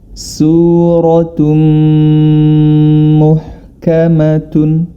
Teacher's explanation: Kita ketahui bersama bila mana nun sukun atau tanwin bertemu dengan mim, maka cara membacanya adalah dia dimasukkan huruf ta tersebut ke dalam huruf berikutnya, yakni pada huruf mim, dan harus disertai dengan gunnah atau dengung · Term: idgham bi gunnah